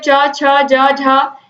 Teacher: फिर च वर्ग है, च, छ, ज, झ, इनका उच्चारण स्थान तालु होता है।